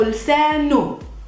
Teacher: in the spoken Arabic, we usually don't concentrate a lot on this h at the ending, hu. We just use the same vowel, u, without the h.